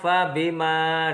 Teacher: 159 Hai yang pertama fabima disitu ada hukum bacaan Mad Thobi'i ada fathah bertemu dengan alif panjangnya dua harokat